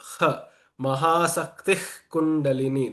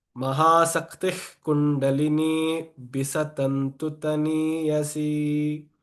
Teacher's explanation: So here Sakti, and then after the Visarga there is Ka. So it becomes a guttural ha sound.